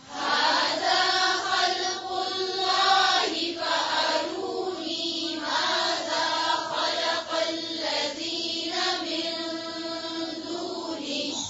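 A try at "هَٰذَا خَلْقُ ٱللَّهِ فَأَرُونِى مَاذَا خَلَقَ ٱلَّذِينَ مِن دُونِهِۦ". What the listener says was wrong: خلق الله خلق नहीं है खल्क़ है ठीक फिर से पढ़ें هذا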